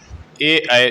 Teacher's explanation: ए ऐ जो है वो कंठ तालव्य है